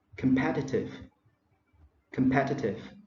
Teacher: so competitive is stress on the second syllable